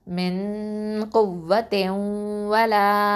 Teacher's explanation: அப்புறம் வாவ் ஃபத்ஹா வ. அடுத்தது லாம் ஃபத்ஹா அலிஃப் மத் இருக்குது, லா 2 அலிஃப் நீட்டணும்